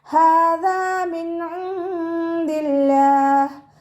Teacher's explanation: നമ്മുടെ നാവിൻ്റെ അറ്റവും മേലെ മുൻപല്ലിൻ്റെ അറ്റവും ചേർന്നിട്ടാണ് ദാല് പുറപ്പെടുന്നത്. സൗണ്ടിനെ ദാലായി പോവാതെ ശ്രദ്ധിക്കുക കേട്ടോ.